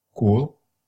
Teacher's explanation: The K is going to be rounded in this word, and your lips are extended forward.